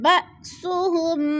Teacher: با حمزہ ساکنہ کو جھٹکا دے کر پڑھیں گے